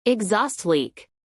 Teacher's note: Accentuación en la segunda sílaba